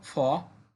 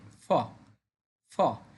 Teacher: কিন্তু F for ফ যখন আমরা বলব তখন আমাদের উপরের পাটি দাঁত এবং নিচের ঠোট মিলিয়ে বলতে হবে